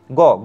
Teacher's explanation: গ বললে হাতে কিছু একটা কম্পন হচ্ছে। এটা হাত দিলে বুঝতে পারবেন। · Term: ঘুষধ্বনি